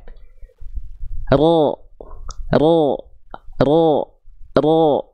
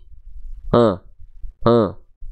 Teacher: perhatikan baik-baik nih jadi si ujung lidahnya enggak nempel ya Ah si ujung lidahnya enggak nempel yang nempelnya adalah bagian punggung lidah kita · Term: huruf ro